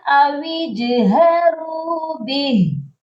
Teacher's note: اچھا ادھر دیکھیے گا ہا کے نیچے جو ہے کھڑی زیر ہے، اور بہت سے لوگ جب یہاں پر وقف کرتے ہیں بھی ہی ایسے ہی وقف کرتے ہیں، جب بھی ہا کا وقف آتا ہے، ہا پر ہم آ کر رکتے ہیں تو ہم نے ہا کو سائلنٹ کرنا ہوتا ہے، ہا کو ساکن کرنا ہوتا ہے، تو یہاں پر ہم نے ہا کو ساکن کرنا ہے، اس کی کھڑی زیر کو نہیں پڑھنا، تو یہ پڑھا جائے گا اویجہروا بہ۔